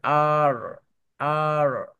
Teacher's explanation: আমেরিকানরা আর আর মানে র টা একদম শেষে লম্বা করে